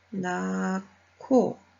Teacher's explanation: 히읗과 기역의 두 자음이 만나서 키읔이 되었습니다